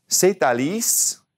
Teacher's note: the T at the end now has to carry over we have to say that T because it's followed by a vowel · We have to say that T because it's followed by a vowel in the name Alice, Alice. C'est Alice.